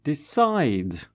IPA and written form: 'dɪsaɪd (decide)